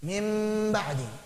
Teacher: Kenapa? Karena mim sama dengan ba dari segi makhrajnya dan sama dengan nun dari segi sifat gunnahnya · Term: huruf mim